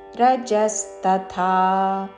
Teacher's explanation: రజస్ తథా ముందు అల్పప్రాణ తా పలికి తరువాత మహాప్రాణాక్షము థా దీర్ఘముతో